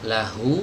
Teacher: hanya juga sama harus taktik tempat keluarnya sama seperti Hamzah ini keluar dari tenggorokan bagian bawah ya atau dari pita suara hati-hati di sini ketika kita mengucapkan huruf H inikan maju bibirnya